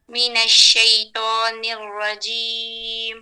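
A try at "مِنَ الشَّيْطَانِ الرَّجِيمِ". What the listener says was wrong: ٹھیک ہے اب تھوڑا سا پا کو بھی پر کریں. پا آپ کا تا کے قریب آ رہا ہے. من الشیطان تو پیچھے کی طرف نہیں لگے جائیں. زبان کی نوک اوپر والے دانتوں کے جڑ کے ساتھ لگائیں اندر کی طرف.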